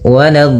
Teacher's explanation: Lanya jangan sampai tebal. Jangan walad tapi lanya tipis. Walad baru di dhadnya yang tebal.